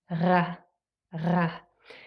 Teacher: what happens is it's an uvular sound. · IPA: /ʀ/